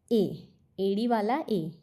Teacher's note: ए का उच्चारण कंठ और तालु दोनों के सहयोग से होता है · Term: कंठ तालव्य स्वर